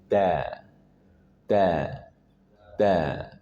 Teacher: dia tarkik tipis jangan sampai ditebalkan da tapi da kalau da berarti nanti majukan ujung lidah agak dimajukan jadi da jadi ringan dan tipis da langsung kita praktikkan dengarkan dan ulangi. · Kemudian huruf dal, ujung lidah dari permukaan atasnya bertemu dengan gusi gigi seri atas